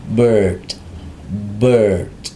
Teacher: Jangan lupa untuk aksen Amerika R-nya disamarkan